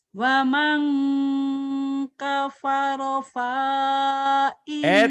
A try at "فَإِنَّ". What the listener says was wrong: kenapa panya pendek? Kan ada baris di bawah. Fa indallah. Pendek ya. ومن كفر فإن الله غني حميد.